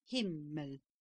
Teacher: When two come together, they must be divided, the first, as in himmel, being sounded dull and without resonance, the syllable and tone being kept as nasal as possible, the lips closed, and a pause being made between the two syllables. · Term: double consonants